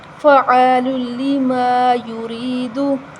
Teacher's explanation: نیچے زیر ہے تو ہم اس کو باریک پڑھیں گے اور یہاں یا مدہ ہے ہم اس کو بھی ایک الف کے برابر لمبا کریں گے کیونکہ اس سے پہلے زیر آ رہی ہے یا ساکن سے